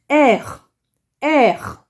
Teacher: you make a kind of guttural sound, like you're trying to scratch your throat, so to speak.